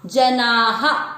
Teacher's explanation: दूसरा चरण जनाः, ज में अ मिक्स किया, जना, आ की मात्रा है तो विसर्ग को पढ़ेंगे हा, जनाः। सु क्री, क्री का अर्थ हुआ क आधा और नीचे जो मात्रा है वो है री से ऋषि की, इसको पढ़ेंगे सुकृति नो।